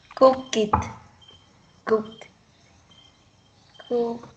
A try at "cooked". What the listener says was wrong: It's not cook it, but cooked. Like this. Cooked. Cooked. Cooked.